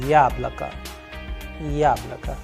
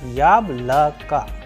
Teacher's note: the first vowel Ya is having the stress or the udarini on, and the rest of the sound of the vowels, that is O, and O after letter K is coming as A.